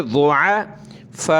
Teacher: ضاد کو موٹا کریں گے ، ضُعَفَاء، اس طرح کھڑے ہوں گے اور مد کرنا ہے